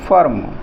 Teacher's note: तो जब फर्म बोल रहे हैं तो उसमें आ की आवाज़ आ रही है, आ का उच्चारण आ रहा है, और ये हल्के से बोल रहे हैं, ह्रस्व स्वर में आ का उच्चारण आ रहा है, तो ये हो गया फर्म, यानी आपको हमने ह्रस्व में बोला है, बहुत अल्प समय के लिए बोला है।